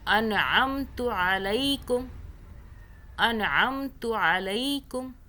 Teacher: عین کو حلق سے پڑھیں